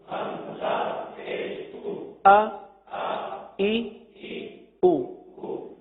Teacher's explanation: حرف اور حرکت دونوں کی ادائیگی کریں، حمزہ زبر آ، کیونکہ حمزہ کی ادائیگی میں غلطی ہوتی ہے اس لیے تھوڑا سا توقف کے ساتھ پڑھا گیا